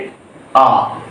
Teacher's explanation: আ যখন আমরা উচ্চারণ করি তখন জীব একেবারে আমাদের মুখবিবারের মেঝেতে অবস্থান করে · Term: নিম্ন স্বর